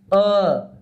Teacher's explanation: मध्य स्वर म्हणजे बरोबर जिभेचा सेंटर आहे